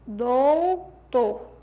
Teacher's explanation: Além da supressão do fonema final, você vê a monotongação